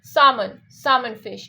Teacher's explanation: So people say salmon because there is an L in it, but we have to make that L sound silent